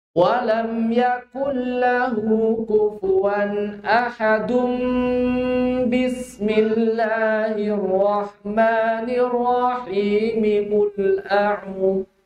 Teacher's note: jadi ada dengung ahadum bismillahi